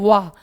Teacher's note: वा का उच्चारण दंत और ओट की मदद से होता है इसलिए इसको दंतोर है दं व्यंजन है इसको याद कर लीजिए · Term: दंतोर व्यंजन